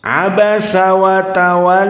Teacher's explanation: tidak ada harf dari harf istilla sehingga dibaca dalam keadaan datar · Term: murqoqoh, muraqqaqah